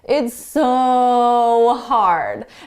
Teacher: one thing that native speakers do with the word so is we elongate it we make it longer to emphasize how hard it is or to emphasize whatever adjective it is it's so hard